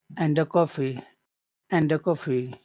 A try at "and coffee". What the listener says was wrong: It's possible to say a coffee, but that's not what they're saying here. They're saying coffee. So there's no here. It's just and coffee. And coffee.